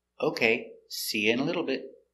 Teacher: the t after the vowel is a stop t so the tongue goes up